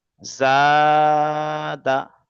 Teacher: এই জাটা টান হবে, দালটা তাড়াতাড়ি শেষ হয়ে যাবে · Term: আলিফ মাদ্দা